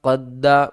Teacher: دال کے اوپر ہم نے قلقلہ بھی کرنا ہے، تشدید کی وجہ سے سختی بھی کریں گے